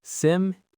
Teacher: The correct pronunciation has 3 syllables, and the stress is on the first syllable.